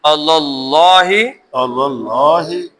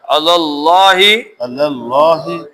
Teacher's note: اللہ کا لام موٹا کیوں زبر، زبر ہے